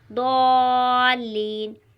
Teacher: اس کا تلفظ زبان کے بائیں کنارے سے نکلتا ہے۔ · جب ہم سورہ فاتحہ کی تلاوت کرتے ہیں تو اس میں ایک حرف آتا ہے ضالین، تو اسی طرح وہاں پر ضاد ہے تو پر پڑھا جائے گا، موٹی آواز میں پڑھا جائے گا